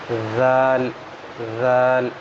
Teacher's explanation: جب ہم ذال پڑھیں گے تو زبان کی نوک جو ہے نا، جو آگے کی سامنے والے دانت ہیں وہاں پر ہم ٹچ کر دیں گے